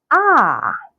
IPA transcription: ɑː